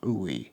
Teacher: And then OE, this is sort of like oo and e, but it's not quite a sound that's found in English. Those two are kind of mushed together, ooey. Think of like an egg yolk feeling in the mouth, ooey, because this word literally means egg, ooey.